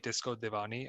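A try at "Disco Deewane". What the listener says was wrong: know, but it's Disco Devane, not Divani.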